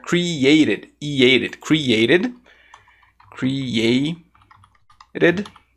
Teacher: o t entre vogais ele ficar com esse som né do roru ou até mesmo um som de D